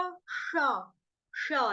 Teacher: जीभ फोल्ड हो जाएगी आपकी, मूर्धन्य में चली जाएगी, फोल्ड होकर तालू के ऊपर टच करेगी और पीछे की ओर खिंचवाएगी